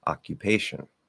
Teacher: So that is a weak K. So it is released, yes, but it's a weak K, right?